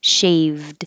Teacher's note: Shaved. And then put your tongue up to stop the airflow with a D. · you wouldn't hear the d usually unless there's a vowel yeah a vowel after it